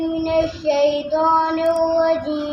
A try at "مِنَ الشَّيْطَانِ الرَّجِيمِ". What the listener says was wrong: من الشین کو صحیح ادا کریں. من الشیطان الرجیم.